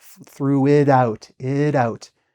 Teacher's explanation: you notice I'm using like a flapped T here, like threw it out, it out. It sounds like a D almost.